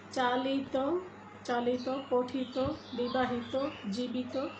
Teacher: তয়ের ওকারান্ত উচ্চারিত হবে, যদিও আমরা দেখতে পাচ্ছি বানানে ত এবং ইত